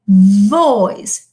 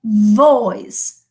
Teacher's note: You say, for example, when you talk about, I don't know, let's say boy, okay, the ba is bilabial, boy, okay, but the va, okay, this fricative sound is labiodental, okay, and it is voiced, okay, which means that we produce it between the upper teeth and the lower lip, okay, all right, but you produce friction.